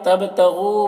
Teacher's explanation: با میں قلقلہ ہوگا، غو غین کو پر پڑھیں گے، حروف مستعلیہ میں سے ہے، اور یہاں پر واو مدہ ہے، اسے بھی ایک الف کے برابر کھینچ کر پڑھیں گے۔